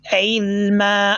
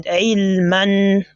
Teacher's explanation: Whenever you pause on a tanween, that is the fathatan, it will change to single fatha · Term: al-maddul iwad